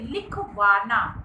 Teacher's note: लिखवाना में वा पर बल दिया गया है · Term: शब्द बलाघात